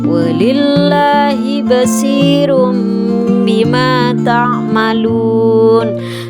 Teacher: nun sukun atau tanwin diubah menjadi mim dan dibaca dengan dengung atau gunnah. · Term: iqlab